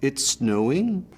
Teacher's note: Canadians have this rise at the end, so every statement sounds like a question. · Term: Canadian rise